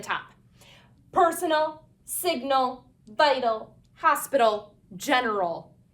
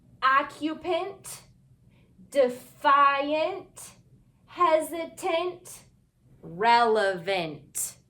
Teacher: when we add suffixes to the end of the word specifically the a l and the an suffixes and the word is more than one syllable we have to use the schw sound